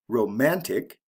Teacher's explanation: romantic the second syllable is emphasized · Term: stress pattern